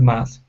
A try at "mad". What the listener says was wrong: give me a a good D instead of math okay pull the tongue back it's mad